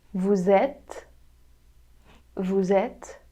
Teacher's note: It has a little liaison, a connection between the S and the vowel.